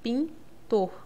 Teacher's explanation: esse n ele vai nasalizar o i É como se eu escrevesse com o tio em cima do